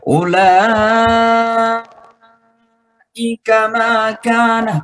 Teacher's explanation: Kemudian ada hamzah setelah mad tabi'i di tengah kata, itu namanya mad wajib muttasil, harus dibaca 6 harakat ya. Ulaika makana, baik dibaca lambat maupun dibaca cepat, hukumnya tetap 6 harakat ya.